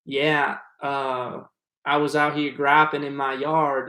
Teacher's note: all of the A's and E's and vowels are very drawn out